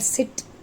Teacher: S is voiceless alveolar fricative sound.